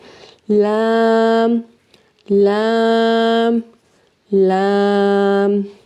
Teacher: जुबान का जो किनारा है उसको अपनी सनाया उलिया के साथ वाले दांतों के साथ लगाना है